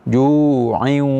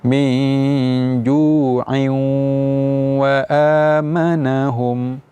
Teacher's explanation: Bunyi nun pada tanwin ain itu dimasukkan ke huruf waw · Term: idgham bi gunnah